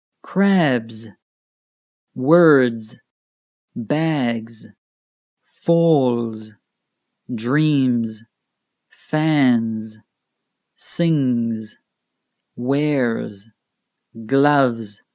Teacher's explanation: sound uses the vocal cords and they produce a vibration or humming sound in the throat if the last letter of the word ends in a voiced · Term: voiced sound